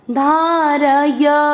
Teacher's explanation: र और य दोनों अक्षर पूरे पूरे, दोनों में अ का उच्चारण मिक्स होगा